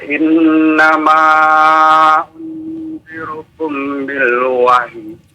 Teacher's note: mim ketemu dengan ba ya ah ini namanya ikhfa syafawi ya jadi ditahan dua harakat